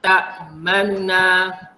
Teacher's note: tetapi disebabkan hukum raum bunyi baris depan nu ni hanya jadi 1/3 saja. Pendek sangat ya.